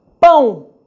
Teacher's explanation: o ó quando é semivogal tem som do U